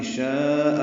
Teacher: شاء میں مد متصل ہے، ہم اسے 4 حرکات سے زیادہ لمبا کرتے ہیں. شاء الف مدہ کے بعد حمزہ ایک کلمے میں آنے کی وجہ سے مد متصل ہوئی.